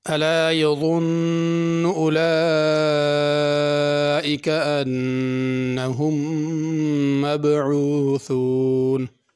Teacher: الا میں حمزہ پڑھنا ہے، عین نہیں پڑھنی۔ عین پڑھی تو معنی غلط ہو جائے گا۔